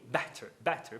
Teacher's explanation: Pode ser falado better, sim, porque a tônica é a primeira sílaba. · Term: tap